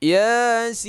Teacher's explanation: Ya ini panjangnya 2 harakat. Sin ini panjangnya 6. Ya. Jadi ini dinamakan dengan huruf munqata'ah.